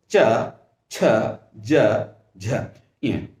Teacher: हमारी जिह्वा तालु से टकराती है और जिसके परिणाम स्वरूप च वर्ग का उच्चारित है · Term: तालव्य